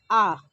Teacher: जिस शब्द के उच्चारण में, स्वर का उच्चारण में मुख पूरी तरह से खुला रहता है वह विवृत होता है। उदाहरण आ बोलने से हमारा मुख पूरी तरह खुलता है